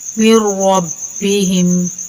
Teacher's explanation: نون ادھر حذف ہو جائے گا، نون نہیں پڑھیں گے، میم کو را سے ملا کر را کو موٹا کر کے پڑھیں گے